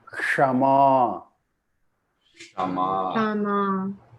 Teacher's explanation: I have a mistake here. The S should be the one which hits the roof.